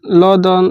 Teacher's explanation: ल दंत से बोला जाता है